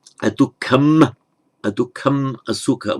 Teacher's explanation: It's purely euphonic. It's to avoid the hiatus between adukkha asukha. It doesn't have any grammatical function.